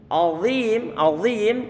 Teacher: huruf dha dia punya sifat tebal ataupun yang disebut sebagai sifat isti'la. Ada unsur tafkhim di sana.